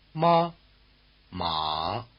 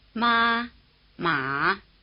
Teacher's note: the high tone was like a single steady high note, the low tone was lower in the middle than at either end. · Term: high versus low